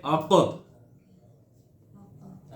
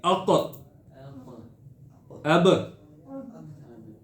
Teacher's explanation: آواز بند ہو جاتی ہے لیکن قوت کے ساتھ بند ہوتی ہے